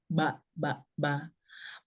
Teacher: Bibir yang pertama itu kan, bertemunya 2 bibir atas dan bibir bawah